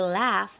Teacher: the voice alular lateral approximate sound L when we say laugh we allow the air flow to pass along the sides of the tongue creating a clear l sound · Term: voiced alveolar lateral approximant